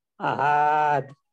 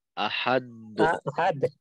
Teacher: এটাকে ওয়াকফ করলে আহাদ, হা লম্বা হবে না কিন্তু। আহাদ, আহাদ হ্যাঁ, হাদ, আহাদ, আহাদ জি আচ্ছা, আহাদ জি জি।